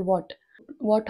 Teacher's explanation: जेव्हा आपण डब्ल्यू बोलतो तेव्हा तुम्हाला राऊंड करायचा असतो ओठांचा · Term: राउंड युअर डब्ल्यू